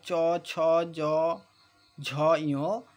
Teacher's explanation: উচ্চারণের সময় জিভটা আমাদের তালুতে, অর্থাৎ যে মুখের উপরের দিকে তালুতে টাচ হচ্ছে, তাই এগুলোকে বলা হচ্ছে তালব্য বর্ণ।